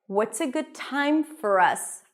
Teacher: notice the T that is a little aspirated feels like it has a little H there